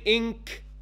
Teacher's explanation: I gave my ghunna on the makhraj of the kaf. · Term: weakest level of ikhfa